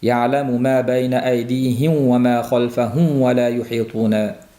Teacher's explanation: Ikkalasi ham labdan chiqadi. Maxraji bir bo'lganligi uchun bu mimni to'la aytmasdan vovga labimiz o'tib ketish holati uchrab turadi. Yamidihim vfahum vuh bu talaffuz qilinib qolishi mumkin.